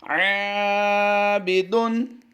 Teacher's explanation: ऐन हुरूफ मुस्तफ़ला से है तो यहाँ पर इसकी अदायगी हम बारीक करेंगे, लेकिन ऐन को हलक के दरमियान वाले हिस्से से अदा करेंगे। आबिदुन, इसको अलिफ मद्दा की वजह से हम लंबा कर रहे हैं, ऐन अलिफ ज़बर आ को हम लंबा करके पढ़ेंगे।